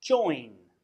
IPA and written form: dʒɔɪn (join)